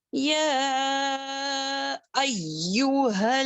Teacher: یا کو 4 کاؤنٹنگ کے برابر کھینچیں گے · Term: مد منفصل